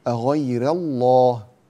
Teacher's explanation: أغير الله، لا تقول أغير الله أو أغير الله، أغير الله هذا عند حفص تفخم الراء وتفخم اللام، لكن عند ورش ننتبه إلى ترقيق الراء وإلى تفخيم اللام، أغير الله تفخيم اللام.